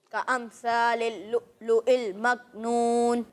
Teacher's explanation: ابھی بھی ثا میں سیٹی کی آواز آ رہی ہے، تو اسے آپ نے ختم کرنا ہے، ٹھیک ہے.